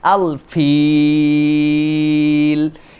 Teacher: শেষে 3 আলিফ টানতে হয়